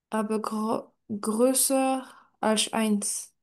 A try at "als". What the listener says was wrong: Du coup, tu me dis Alch. C'est ça, hein? Als, tout simplement.